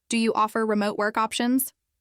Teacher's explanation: Instead of saying, "Do you offer remote work options?" as if reading a list, I encouraged him to try, "Do you offer remote work options?" with a rising tone at the end. Suddenly, it sounded like a real question.